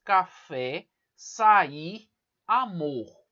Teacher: palavras oxítonas, que a sílaba mais forte é a última